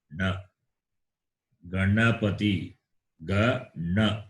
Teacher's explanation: Na is fourth class, cerebral. You can see the tongue touching the roof.